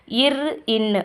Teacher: மேல்வாயை நாக்கின் நுனி மிகவும் பொருந்துவதால் பிறக்கிறது